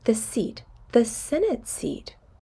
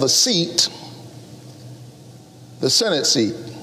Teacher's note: we stress seat the first time we mention it but not the second time once it's old repeated information we don't stress it anymore we